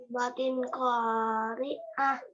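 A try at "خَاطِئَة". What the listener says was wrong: Khoti'ah, bukan khori'ah. Khoti'ah.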